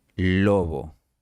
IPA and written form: 'lo.βo (lobo)